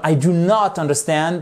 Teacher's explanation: vous pouvez dire I do not, mais on insiste plus sur le not.